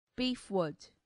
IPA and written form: ˈbiːfˌwʊd (beefwood)